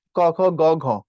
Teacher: ক খ গ ঘ পিছনে যাচ্ছে একদম কন্ঠের মূলে